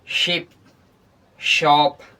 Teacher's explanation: Voiceless. ये सब sound जब हम लोग प्रोड्यूस करते हैं तो वोकल कॉर्ड में कोई भी रिंगिंग या वाइब्रेशन नहीं होती है